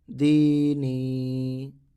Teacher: دال کو بھی تھوڑا کھینچے، نون کو بھی تھوڑا کھینچے